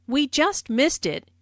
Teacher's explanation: Notice the emphasis on just to show the very recent past.